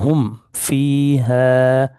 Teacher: ہا میم پیش ہم، فا یا زیر فی، ہم فی، ہا الف زبر ہے، ہم فی ہے۔ دیکھیں میں میم کو بالکل ظاہر کر کے پڑھ رہا ہوں، ہم فی ہے۔ یہاں پہ ادغام یا کوئی اخفا نہیں ہوگا، ہم غنہ ایسے نہیں ہوگا، بلکہ ظاہر کریں گے نارمل، ہم فی ہے۔